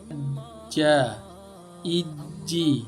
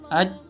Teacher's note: kalau huruf jim ini posisinya, ya, makhrajnya itu di tengah lidah bertemu langit-langit di atasnya.